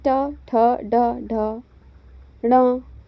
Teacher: जिन व्यंजन का जो उच्चारण स्थान है वह जीभ द्वारा मूर्धा को स्पर्श करने से होता है उन्हें मूर्धन्य कहते हैं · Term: मूर्धन्य व्यंजन